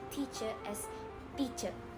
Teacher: In Iban, the T is often unaspirated, meaning it lacks the puff of air we hear in English words like top or tea.